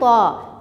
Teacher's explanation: ज़बान की नोक और सनाया उलिया की जड़